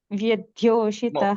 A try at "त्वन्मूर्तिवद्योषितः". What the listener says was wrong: No, you're saying Vya, it's a Va. Tvanmurti Vadhyoshitah.